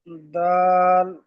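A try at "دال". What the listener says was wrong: দাল, আর একটু বেশি করে টান দেন। দাল।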